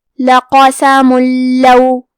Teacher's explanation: ادغام کا معنی ہے حرف کو حرف میں داخل کرنا، تو ہم تنوین کو لام میں ملا کے بغیر غنہ سے لیکن تشدید کے ساتھ یہ حکم کو ادا کریں گے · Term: ادغام بغیر غنہ